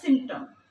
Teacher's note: এখানে সিম্পটম খেয়াল করে দেখলেই বোঝা যায় যে পিটাকে উচ্চারণে নেওয়া হচ্ছে না